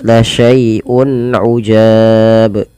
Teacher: Kemudian berlafal ujab, di sini ada bacaan izhar halqi, yaitu adanya dhammatain atau tanwin ya bertemu dengan huruf ain, maka di sini harus diperjelas bunyi suara unnya ketika ia bertemu dengan huruf-huruf izhar